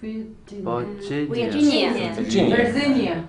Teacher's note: Look, the second syllable is the strong one. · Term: strong syllable